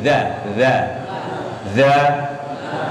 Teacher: kalau zal ujung lidah temukan dengan ujung gigi seri atas, ujung ketemu ujung, bukan di belakang gigi tapi di ujung.